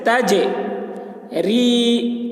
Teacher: جیم یہ حروف قلقلہ میں سے ہے اور اس کے اوپر جزم ہے تو جیم میں قلقلہ بھی ہوگا، یعنی آواز ٹکرائے گی